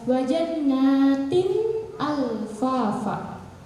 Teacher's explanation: Tinnya ini jelas, N-nya tin itu jelas, tidak berubah jadi ting, tidak berubah jadi tim, tapi tin. Wajannatin alfafa itu dihukumi dengan idhar.